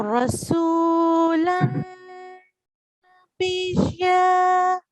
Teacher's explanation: noon is one of the letters for idgham, which is done with nasal sound.